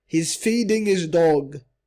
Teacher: The H is deleted. It's not read. He's feeding his dog. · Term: deleted H